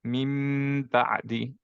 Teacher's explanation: মুখটা ক্লোজ করে এবং সাউন্ডটা বের হবে হচ্ছে nasal cavity দিয়ে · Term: মিমের সাথে ইখফা